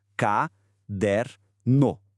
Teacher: Em caderno, o som do R e do N são pronunciados separadamente. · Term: encontro consonantal